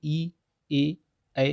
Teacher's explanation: जो जिह्वा का अग्र भाग है उसका प्रयोग ज़्यादा होता है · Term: अग्र स्वर